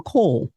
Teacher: the tendency of AVE speakers to simplify consonant clusters at the ends of words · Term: final consonant cluster reduction